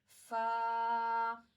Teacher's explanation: Fa will be pronounced when the edge of the upper front teeth, जो हमारे ऊपर के सामने के दांत हैं, upper front teeth, the edge of the upper front teeth is going to touch the wet part of the lower lip. ऊपर के दांतों का जो किनारा है, जो सिरा है, वो हमारे नीचे वाले होंठ के गीले हिस्से को टच करेगा।